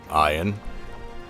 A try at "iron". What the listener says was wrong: Ion or iron? Use your R's, sir. No, I know, but they pronounce the R. They pronounce AR and whatever.